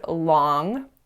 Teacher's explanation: So the first mistake that I made may have been too hard to catch, but at the end of the word long, we produce a velar nasal.